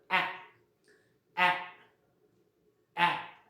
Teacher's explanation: So our lips do not round themselves. आपल्या ओठांचा म्हणजे काय राऊंड असा शेप होत नाही. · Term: अनराऊंडेड व्हावल